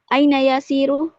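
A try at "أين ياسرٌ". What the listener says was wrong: Yasirun, tanwin kan?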